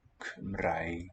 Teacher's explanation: That nice trilled R.